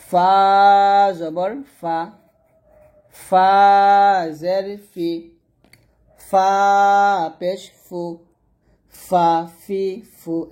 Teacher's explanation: যখন আপনি ফাটা উচ্চারণ করবেন অবশ্যই বাতাস বের করতে হবে, বাতাস বের করেই উচ্চারণ করতে হবে এরকম পাতলা করে। ফা জবর ফা, ফা জের ফি, ফা পেশ ফু, ফা ফি ফু এরকম।